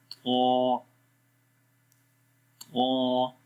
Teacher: اور دوسرا، اس لیٹر کے اندر ایک کوالٹی ہے اطباق کے نام سے، جس کا مطلب یہ ہوتا ہے کہ جو آواز ہوتی ہے وہ اوپر والے تالو اور زبان کے درمیان میں سٹک ہو جاتی ہے، بلاک ہو جاتی ہے، ٹھیک ہے۔ اس وجہ سے اس کو ایکسٹرا بولڈ پڑھتے ہیں، تھوڑا سا زیادہ موٹا پڑھا جاتا ہے پھر یہ لیٹر۔ · زبان کی جو جڑ ہے وہ اوپر کی طرف اٹھتی ہے، مطلب کہ آواز اوپر کی طرف جاتی ہے، جس سے اس لیٹر کی آواز کے اندر موٹائی آ جاتی ہے